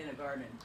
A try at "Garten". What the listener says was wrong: A. Garten. Not garden. Garten.